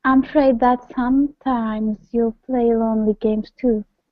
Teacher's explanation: this time put the stress on some